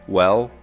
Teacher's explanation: articulated with the tip of the tongue on the alveolar ridge but with the back part of the tongue slightly raised towards the soft palate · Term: velarized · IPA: /l/